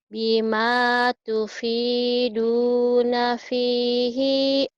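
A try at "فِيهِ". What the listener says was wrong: Pihinya pendek. Pihinya pendek.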